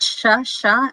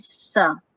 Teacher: Okay, these two consonants are almost the same because they are both fricative consonant and they are both voiceless. However, sha is an alveolar palatal fricative and sa is an alveolar fricative